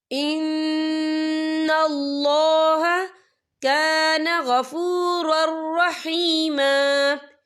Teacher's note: یہاں پہ دیکھیں نون مشدد ہے تو یہاں پر غنہ بھی ہوگا